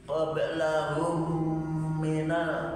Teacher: disebut idgham mutamasilan, dibaca jadi satu karena hurufnya sama. Qablahum minal, tidak boleh diputus.